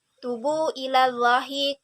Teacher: Munfasil artinya terpisah, yakni antara mat dengan hamzah terdapat pada kata yang berbeda. Panjangnya 4-5 harakat. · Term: Mat jaiz munfasil